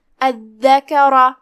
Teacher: پھر یہاں آخری میں جو کہ را پہ زبر ہے، لہذا را کا حکم ہے تفخیم، تو اسے بھاری آواز میں پڑھنا ہے